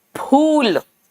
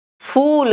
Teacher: हिंदी का फ ये दोनों होठ चिपकते हैं हिंदी में